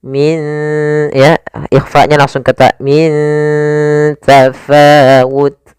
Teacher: Cara membacanya, nunnya disamarkan ke huruf ta, bukan dibaca ming tafawut, tapi dia min, ya ikhfa-nya langsung ke ta, min tafawut.